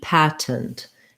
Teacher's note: It is correct and okay to say patent. So you can say first syllable stress with a true T